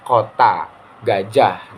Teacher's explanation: Nah, seperti contohnya ketika kita mengucapkan bunyi K dalam kata kota, contohnya bunyi G dalam kata gajah. Nah, ketika kita menyebutkan dua kata tersebut, itu lidah bagian atas menyentuh langit-langit bagian belakang. K contohnya kota, gajah. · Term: bunyi velar